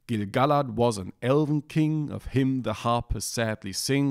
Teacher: you have every second syllable stressed